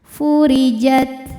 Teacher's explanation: huruf ra dibunyikan secara tarqiq karena berharokat kasrah. Cara bacanya tipis.